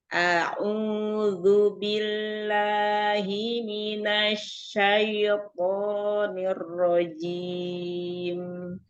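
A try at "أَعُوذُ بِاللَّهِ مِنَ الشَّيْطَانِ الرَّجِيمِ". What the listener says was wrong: Nah, masih ada syai gitu dikit ya. Syai. Selesaikan, turunkan rahang dan bibir bawah turunkan.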